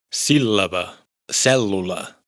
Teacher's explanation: A esto se le llama Laminada. La teoría dice que se pronuncia como una L larga